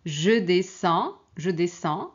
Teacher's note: Donc il y a pas de D ni S à prononcer. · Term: lettres muette